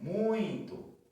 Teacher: Tá com esse som aqui entre o u e o i. Ele nasalizando